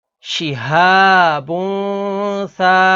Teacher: اب اس میں ناظرین تنوین کے بعد اگلا حرف سا ہے، سا حروف اخفا میں سے ہے تو یہاں پر اخفا یعنی غنہ کر کے پڑھیں گے